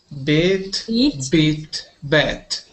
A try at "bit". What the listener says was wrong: This one is not beat. It is bit.